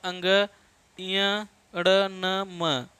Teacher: ये सभी नासिका से उच्चरित होने वाले हैं, नासिक के वर्ण कहे जाते हैं।